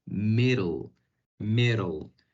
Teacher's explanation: Las Ds tienden a sonar como Rs en español